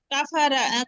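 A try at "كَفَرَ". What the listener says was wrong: না আপু, রা হয় না, র। র। আপনাদের গ্রুপে একটা পেজের ফটো দিয়েছিলাম আমি, কোন কোন হরফগুলোতে ওয়াইয়ের মতো উচ্চারণ হয়, আয়ের মতো না হয়ে, হ্যাঁ। ওইটা আবার একটু দেখে নিন, এটা ভুল হচ্ছে সবারই কম বেশি। কাফারো, কাফারো।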